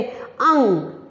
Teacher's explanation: हवा केवल नाक से निकलती है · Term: अनुस्वार